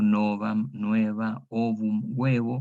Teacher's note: una O tónica abierta diptonga en UE